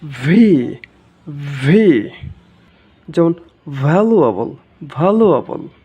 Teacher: এই এফ এর মতো কিছুটা, উপরের দাঁত নিচের ঠোঁট